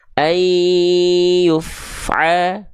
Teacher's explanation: Maka ketika teman-teman melafalkan fa dalam kondisi sukun, jangan sampai dia dibaca begini. Ayyuf ala, antara af ini dengan bunyi a, jangan sampai ada jarak di antara mereka